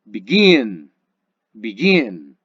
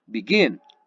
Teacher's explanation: Nótese que la parte fuerte de la acentuación se escucha en la última consonante, perdón, en la última sílaba.